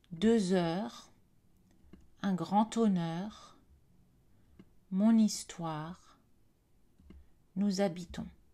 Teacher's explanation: dans les contextes de liaison obligatoire, faites la liaison avec les H muets